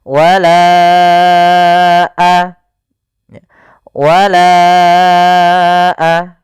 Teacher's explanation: Maka kita namakan dengan mad jaiz munfasil. Maka kita panjangkan huruf lanya sepanjang 4 harakat atau lima harakat. · Panjangkan la-nya dulu 4 harokat baru lepas.